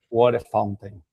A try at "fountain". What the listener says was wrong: There is a N. There is a N in the end. Fountain.